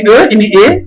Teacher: ketika mengucapkan E itu lebih rendah sedikit